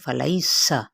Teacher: سین کی سیٹی کو واضح کریں